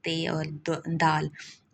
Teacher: زبان کی نوک اوپر والے دانتوں کو چھو رہی ہے، اس کو کہتے ہیں دنتی مسمتیں.